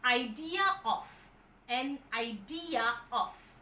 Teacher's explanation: Idea ends in a vowel, of the next word is a vowel, and hence they use an intrusive R in between